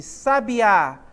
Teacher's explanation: Esse A aqui é a minha sílaba tônica, está no final da palavra